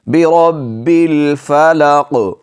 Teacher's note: لام کو ساکن پڑھیں گے، ہلائیں گے نہیں · را کو موٹا کر کے پڑھیں گے، را پر زبر ہے